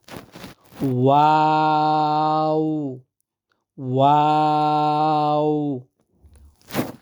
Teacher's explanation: প্রথমে কলির মত ঠোঁটগুলা গোল হবে এরপরে গোলাপ ফুলের মত ছড়াবে তারপরে আবার ওই কলির মত গোছাইয়ে আসবে